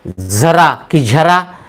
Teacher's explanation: झ शेवटी य नाही येत झ अ येतो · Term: दंत तालव्य